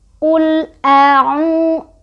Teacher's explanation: Artinya ini sudah memenuhi syarat dari mad thobii ya. Cara bacanya dipanjangkan sebanyak 2 harokat atau kalau mau lebih konsisten bisa diayun ya.